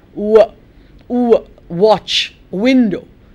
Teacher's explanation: Remember, I'm rounding my lips. It's almost as if I'm saying a vowel. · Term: semi-vowels